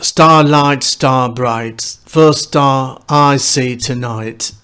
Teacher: the four main stresses with a caesura in the middle